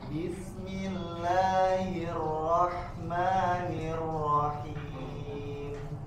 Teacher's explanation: Ma-nya ya dibuka mulutnya, kemudian tipiskan ar-rahmanirrahim. Hi-nya sempurnakan juga.